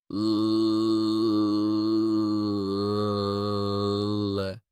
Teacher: the tip of the tongue lightly touches the alveolar ridge and does not retract immediately. Instead, it remains in contact while air flows around the sides of the tongue. For example, you can continuously say l. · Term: lateral approximant